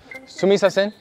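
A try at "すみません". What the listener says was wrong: You're saying sumi-sasen. Sumimasen. Sumimasen.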